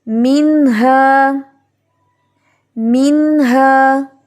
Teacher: نہ ہی ہم یہاں پر میوں ہا پڑھیں گے چھپا کر، اور نہ ہی ہم اتنا اظہار کریں گے کہ وہاں پہ غنہ آ جائے